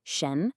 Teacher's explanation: The first syllable, shen, is a second tone which rises. A good way to think about it is to imagine you're asking a question in English, like, That upward inflection, that's the feeling of a second tone, shen.